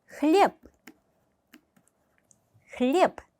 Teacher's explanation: 유성음이 단어 끝에 있을 때 무성음화 됩니다